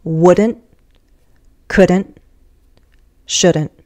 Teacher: wouldn't couldn't shouldn't and I just said those with glottal stops